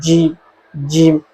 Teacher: تو جیم میں صاف اوپر زبان کا درمیان والا حصہ اوپر کے تالوں کے ساتھ چپک جاتا ہے